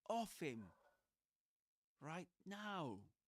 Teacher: he stresses the word off.